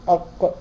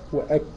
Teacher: اللحمي طيب بعد يجي الكاف بقى ايه الفرق بين اق واك القاف جت ايه اقصى اللسان مع الحنك اللحمي من اعلى الكاف مع الحنك اللحمي والعظمي مشترك بين اللحم والعظم من اسفل